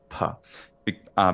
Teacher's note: we have to add what's called aspiration, a bit of air onto it, a little like an H sound